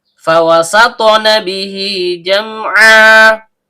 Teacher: Karena haknya berbaris kasroh panjang atau kasroh berdiri, maka hukum bacaannya mad silah qasirah, panjang 2 harokat dan setiap panjang keluar dari rongga mulut. Jim, tengah lidah naik memantul ke langit-langit.